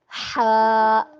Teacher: ہا وسط الخلق، خلق کے درمیانہ حصے سے ہا ادا ہوتا ہے